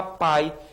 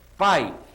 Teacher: que é uma semivogal é um som mais fraquinho então ó na palavra pai eu tenho a junção da vogal a e da semivogal i sai tudo junto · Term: ditongo